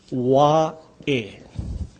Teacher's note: This is the Okina, or the glottal sound. That's the punching sound.